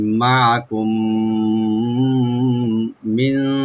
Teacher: মিম সাকিনের পরে যেহেতু মিম আসছে, এখানে ইদগাম উইথ গুন্না হয়ে যাবে